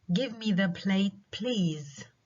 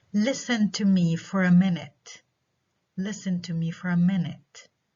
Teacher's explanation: هدول requests فيهم rising tone